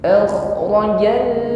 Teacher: ada bunyi dengkur, ada gesekan di akar lidah dengan dinding tenggorokan · Huruf kha sukun, alirkan bunyi kha-nya karena sifatnya rakhawah di sini, ya. Mengalir bunyi huruf kha-nya.